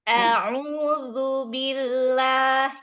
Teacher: huruf zal, ujung lidahnya keluar dikit